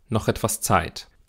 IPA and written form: nɔxɛtv̥as ˈt͡saɪ̯t (noch etwas Zeit)